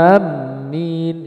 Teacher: a-nya dipanjangkan tanpa mentasdidkan Mima